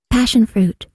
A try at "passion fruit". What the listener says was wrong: Passion fruit. Chữ P đầu mà con. P, pa. Passion. Cong lưỡi lên. Giống như chữ finished á. Mình phải cong lưỡi chữ S lên. Passion. Fruit. Sửa lại cái âm fruit cho cô. Học bữa giờ rồi bao nhiêu bài fruit vẫn đọc chờ là sao?